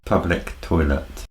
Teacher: normally we stress on the word public which is an adjective and followed by now toilet